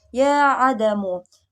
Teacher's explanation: Yang kedua mad jaiz munfasil pada ayat ya adamu, yaitu mad asli bertemu dengan alif yang dipanjangkan 2-5 harokat